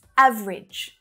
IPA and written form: 'æv (ə) ridʒ (AVERAGE)